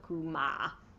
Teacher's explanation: This word, for example, is kuma, and the emphasis is under the mem to let you know that the vowel is that it sounds like that the emphasis is under ma instead of ku